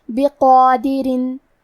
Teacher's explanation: کلمت بقادرین میں حرف القاف کو موٹی آواز میں پڑھیں گے، کیونکہ اس پہ کھڑا زبر ہے تو یہاں مد الف ہے، اور مد الف اپنے پیچھے والے حرف کا حکم لیتا ہے تفخیم میں اور ترقیق میں، لہذا ہمیں مد الف کو بھی بھاری آواز میں ادا کرنا ہے. بقادرین.